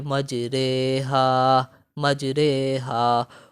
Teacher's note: را کو ہم بیسیکلی مجہول پڑھ رہے ہیں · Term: امالہ